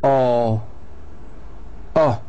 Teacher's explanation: It's a back-rounded vowel.